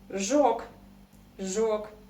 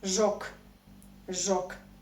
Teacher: Here we have something interesting to discuss too, because if you talk about the form жёг, жёг, you need to know something about famous Russian, or not famous, but important Russian devoicing. So g in the end of any Russian word, you pronounce this Russian sound as k. So we write g, but we say k.